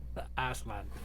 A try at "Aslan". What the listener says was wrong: you're definitely saying a d every time